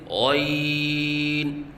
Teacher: غین کو ادنی حلق سے ادا کریں اور پر کر کے پڑھیں